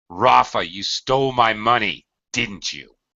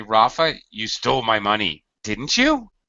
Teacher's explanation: another place where we commonly use final falling intonation on the tag part of the question is an accusation.